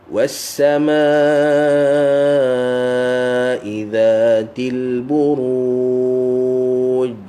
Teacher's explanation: huruf jim dia ada qalqalah dan dia gigi tak rapat. Gigi atas dan bawah dia tak rapat. Kalau rapat dia akan jadi ch.